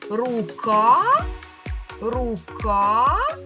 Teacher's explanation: Ми тягнемо голосний звук А, а він стоїть у другому складі. Отже, скісну рисочку ставимо над другим голосним звуком і кажемо, що другий склад у слові рука є наголошеним. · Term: наголос